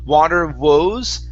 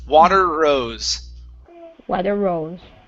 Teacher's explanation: it sounded like you had a good R and then you moved into an oo